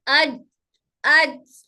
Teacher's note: तो हमारा जबान का दरमियानी हिस्सा हमारे तालु के दरमियानी हिस्से से टच होकर हर्फ जीम अदा होता है।